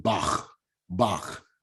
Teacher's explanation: the throaty sound it actually represents that ch and you know it's a hard sound it's a throaty sound